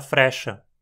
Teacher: um ra é pronunciado mais rápido com uma simples batida da língua no céu da boca